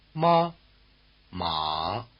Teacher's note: the first tone or high tone word mother and the third tone or low tone word horse will let you locate the extremes